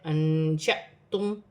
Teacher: الف پر جزم کی حرکت ہے, الف کو حمزہ بھی پڑھا جائے گا اور جھٹکے کے ساتھ پڑھا جائے گا